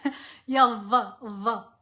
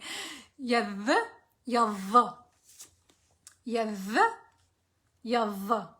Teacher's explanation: It's this one. It's a fricative yad. It's instead of yad, it's yav. It has a vibration.